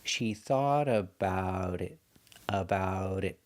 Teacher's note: the T in about is between vowels, so it changes to a fast D.